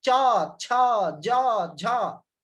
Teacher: जीभ तालू में सट रहा है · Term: च वर्ग